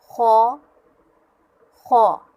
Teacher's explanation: خو بھی حلق کے اوپر والے حصے سے ہی ادا ہوگا لیکن اسے پر کر کے پڑھیں گے